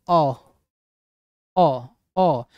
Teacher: जीभ के बीच वाले भाग से उच्चारण हो रहा है तो उसे मध्य स्वर बोलेंगे तो मध्य स्वर में केवल अ आता है बोले अ अ